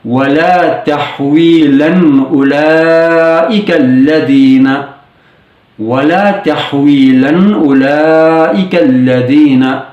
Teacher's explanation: تنوین میں موجود ساکن نون کی آواز کو اخفا کی بجائے واضح کر کے کلیئرلی پڑھا جائے گا